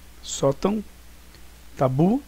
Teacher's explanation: Sótão, tabu, e a mais forte é bu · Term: oxítona